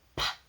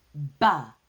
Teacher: But P is only air and B is voiced.